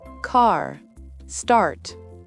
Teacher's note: un A très ouvert suivi d'un R bien prononcé